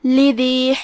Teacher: آخری میں مد یا ہے، یہاں مد طبیعی ہے تو 2 حرف کی مقدار میں ہم اپنی آواز لمبی کریں گے